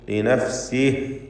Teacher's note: യഹ്തദി ഫഇന്നമാ യഹ്തദി ലിനഫ്സിഹി ലിനഫ്സിഹി എന്നതിലെ ഹാ ദമീറിൽ വഖഫ് ചെയ്യുമ്പോൾ അതിനും സുക്കൂൻ, ലിനഫ്സിഹ് എന്ന് ഹാ വ്യക്തമാക്കി ഉച്ചരിച്ചുകൊണ്ടാണ് വഖഫ് ചെയ്യേണ്ടത്.